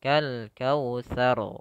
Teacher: Tafkhim tebal. Karena ro-nya sebelumnya adalah harakat fathah, maka tidak dibaca kal kautsar. Tidak tipis tapi tebal.